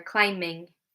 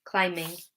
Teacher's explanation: We don't pronounce the B, climbing. It's an M sound, okay? So it still follows that rule, even when it's in a different form.